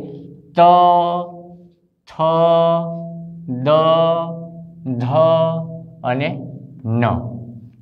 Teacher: જે વ્યંજનોનું ઉચ્ચારણ કરતી વેળાએ આપણી જીભ દાંતને સ્પર્શ કરે તેવા પાંચે પાંચ વ્યંજન એટલે કે ત વર્ગના વ્યંજનોને દંત્ય વ્યંજન કહેવાય છે.